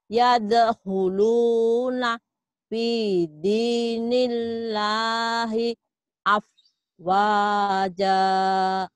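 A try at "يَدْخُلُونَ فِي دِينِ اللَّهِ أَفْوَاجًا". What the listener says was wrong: Nah, yadkhuluna, nanya jangan berhenti ya, Bu ya. Yadkhuluna fi dinillahi afwaja.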